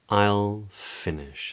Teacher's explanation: So it's the way that I would say that I'm in the middle of my sentence and I don't want you to interrupt me yet because I've got more to say about this subject, but when I have finished what I'm saying, I'll finish and I'll use a downward inflection